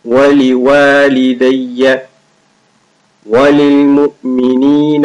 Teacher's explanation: There is alif after the waw, so you stretch it a little.